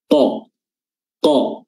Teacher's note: Qaf lagi di sini aqsal lisan, pangkal lidah diangkat bertemu dengan langit-langit lunak